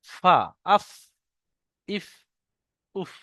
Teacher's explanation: নিচের ঠোটের ভিজে অংশ এবং সামনে উপরের দুই দাঁতের আগার সাথে লাগিয়ে উচ্চারিত হয় ফা উপরের দুই দাঁত এটা আর নিচের ঠোটের ভিজ অংশ আফ